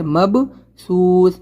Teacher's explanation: मब पे क़लक़ला करेंगे, बा के ऊपर जज़म है, क़लक़ला लेटर है